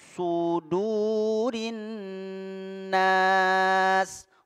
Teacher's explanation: Jadi adanya penyempitan di mulut sehingga suara menajam, ya, ada desisan. Su, jadi tebal karena dia huruf isti'la. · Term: huruf shad